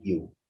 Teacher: In English, the only palatal sound is the voiced semi-vowel ya, as in you. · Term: palatal sounds